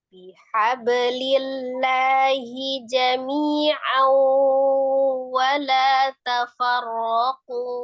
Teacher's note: Tuh tanwin ketemu dengan wawnya ada gunnahnya juga, idgham ya gunnah.